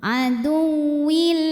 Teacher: Jadi ini cukup pakai nabar. Jadi kita naikkan intonasinya, jadi agak dibentak, digas ya.